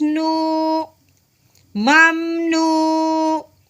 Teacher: واؤ ساکن سے پہلے پیش آ جائے تو اسے ایک الف کے برابر لمبا کرتے ہیں. نون واؤ پیش نو ممنو.